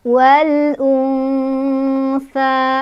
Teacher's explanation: Hamzahnya yang u. Jadi cara bacanya alif lamnya dibaca secara jelas atau diizharkan. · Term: izhar qamariyah